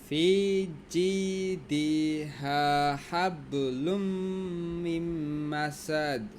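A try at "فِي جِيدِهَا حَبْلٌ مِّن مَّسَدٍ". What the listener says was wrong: দিটাতে টান নাই কিন্তু আবার। ফি জিদিহা হাবলুম মিন মাসাদ। হাবলুম মিন মাসাদ।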